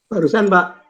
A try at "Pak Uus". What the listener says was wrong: Pak Uus, bukan Pak Us.